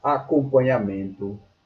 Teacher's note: a sílaba tônica está na penúltima sílaba. Logo, ela é paroxítona.